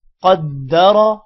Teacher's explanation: زبر کی صورت میں قدر، را موٹی ہو رہی ہے